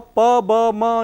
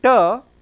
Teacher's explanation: pa, ba, ma, you see lower lip touches the upper lip, but in ta you can see this tip of the tongue is touching the teeth ridge like this. So, tip of the tongue is touching the teeth ridge. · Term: alveolar